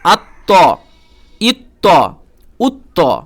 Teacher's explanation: এই যে ত কলকলার হরফ এবং শক্তভাবে পড়বেন